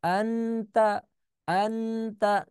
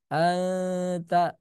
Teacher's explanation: anharo anharo itu dinamakan izhar atau jelas tapi bedanya dengan Ikhfa kalau ikhfa itu dia ujung lidahnya enggak ke mana-mana gitu jadi di bawah aja ya